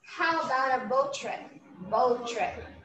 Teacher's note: we can instead of repeating the sound, we can just make an elision